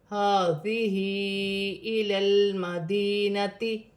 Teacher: الف مدہ بھی بن رہا ہے اور بڑی مد بھی ہے، 5 الف کی مقدار کھینچ کر پڑھا جائے گا